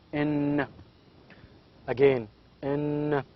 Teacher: There is a complete closure between the tongue and the alveolar ridge. There is a complete contact here, and the air goes out of the vocal cord, out of the nose. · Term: nasal